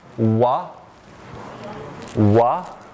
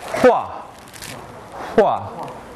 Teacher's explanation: The next two are sounds that are produced by bringing the two lips together like you were making a kiss. One of these is voiced, the other voiceless. They're called bilabial approximants. They are the sounds wa, wa, that's this one, and hua, hua, that's the upside down version.